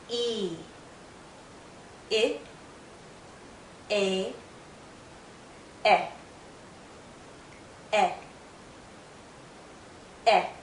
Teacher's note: as we go through these first 4 vowel sounds, you'll feel your jaw lowering. Your mouth should be opening. The general position of your tongue should be lowering.